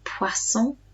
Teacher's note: oh i in french makes a wah sound